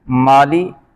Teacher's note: مالے نہیں پڑھیں گے، اکثر لوگ پڑھتے ہیں مالے، یہ مجہول طریقہ ہے۔